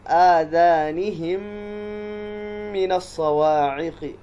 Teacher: فی آذانہم میں وہی مد جائز منفصل ہے، آذانہم من الصواعق، دیکھیں یہاں پر یہ میم ساکن ہے اور اس کے بعد والا جو میم ہے یہ میم متحرک ہے، تو میم ساکن کے بعد میم متحرک آ جائے تو میم کا میم میں ادغام ہو جاتا ہے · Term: ادغام شفوی